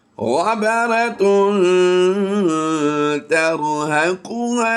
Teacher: تا حروف اخفا میں سے ہے تو ہم اسے غنہ ضرور کریں گے لیکن ملائیں گے نہیں